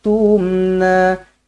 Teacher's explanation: mim yang bertanda mati izharus syafawi dibaca ataupun dimatikan juga dengan jelas dan terang